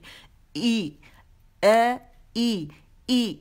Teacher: ई अक्सुल हल्क से निकलेगा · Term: हमजा